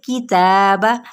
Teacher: اب آپ نے تا کو کھینچیں گے کتنا، ایک الف یا 2 حرکات کے برابر